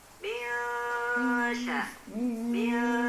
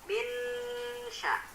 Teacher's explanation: harus didengungkan, kemudian dengungnya itu disamarkan, dan juga sama seperti gunnah, ditahan selama 2 harokat. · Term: hukum ikhfa